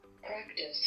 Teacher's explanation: This is a central approximant, which is voiced, but it becomes voiceless when it's preceded by a voiceless plosive